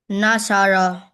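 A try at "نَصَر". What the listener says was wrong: But you forgot that you want to do Waqfu. You want to stop on ra. So are you going to pronounce the vowel like not thorough? Are you going to pronounce like that? No, you are not going to pronounce it like that. You are going to pronounce it as sukun, not zor.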